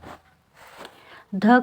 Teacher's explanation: आपका घोष वर्ण है, दंत वर्ण है और महाप्राण है।